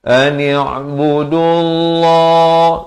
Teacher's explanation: Ani'budullah, dibacakan tebal lafz jalalah